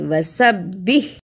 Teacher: اسے وسبی نہیں پڑھنا، ہا کی آواز بھی آنی چاہیے